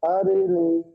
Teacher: ইয়া মাদ্দাহকে এক আলিফ পরিমাণ টান দিয়ে পড়তে হবে।